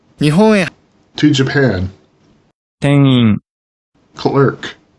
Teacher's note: Before I or E, the syllabic nasal may also sound like a nasalized Y.